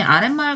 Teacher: 뒷말의 첫 소리가 미음으로 시작하고 그 앞에서 니은 소리가 덧나고 있죠. 따라서 사이시옷을 표기합니다.